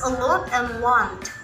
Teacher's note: These vowels are articulated with rounded lips and include short vowels such as a lot and want. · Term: low back rounded vowel